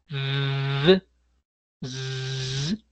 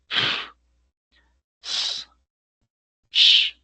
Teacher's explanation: Esos sonidos o no generan vibración. Si hay sonido, pero no vibración. Quizás se mueva la garganta para arriba, para abajo, pero no vibra, que es diferente.